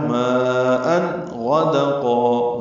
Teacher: تنوین کے بعد غین آنے کی وجہ سے اظہار ہے، ماءً غدقا، غین پر پڑھیں گے، دال باریک پڑھیں گے، قاف پر پڑھیں گے اور قاف کو دو حرکات لمبا کریں گے وقفاً۔